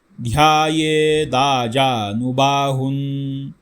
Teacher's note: हु वरती अनुस्वार आहे, अनुस्वाराच्या पुढे ध हे अक्षर आहे, त्यामुळे अनुनासिक उच्चार नकारांत येतो, न असा येतो, हुन असा उच्चार येतो.